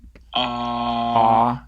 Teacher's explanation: so this is low back unrounded ah